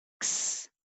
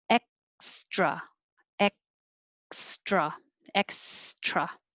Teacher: And so you don't have to pronounce the K like X, just X. You're putting the back of your tongue up there in the K position to stop the air.